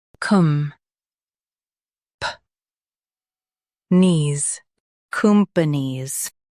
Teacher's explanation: Emphasize com and soften puh-nees.